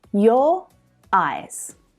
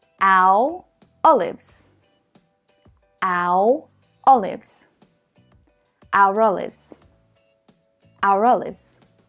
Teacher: the ER linking sound occurs between vowels in British English pronunciation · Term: linking R